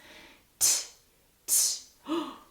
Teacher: There's no vibration there. That means I'm only using my breath. T, T. It stops.